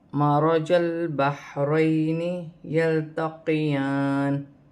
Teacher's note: یہاں پر جیم کو لام کے ساتھ ملا کر پڑھا جائے گا ، لام ساکن ہے، پھر حا بھی ساکن ہے، حا کو